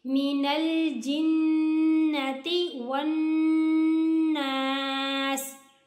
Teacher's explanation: वाव के बाद नून है, नून के ऊपर मुशद्दद है, यहाँ पर गुन्ना होगा और इसके अलिफ मद्दा भी आ रही है, ऐसे एक अलिफ जितना लंबा भी करेंगे